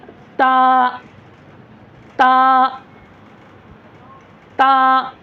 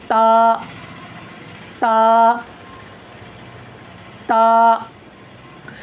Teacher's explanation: ये दोनों दांतों के पिछले हिस्सा, जहाँ दांत की जड़ है वहाँ लगाना है ज़बान की नोक को।